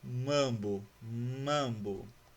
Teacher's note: caso da vogal a vou ter sempre esse sonzinho de a perceba que ele é um som mais nasal